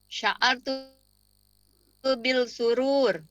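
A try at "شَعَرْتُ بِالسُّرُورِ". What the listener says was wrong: Bis sin samsiyah. Sya'artu bis surur. Sya'ar.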